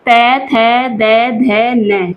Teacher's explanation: त वर्ग जो होता है उसे हम दंत्य वर्ण बोलते हैं। वह हमारे दांतों का जो जीभ होती है हमारी दांतों हमारे जो दांत होते हैं वह जीभ पर टच होते हैं।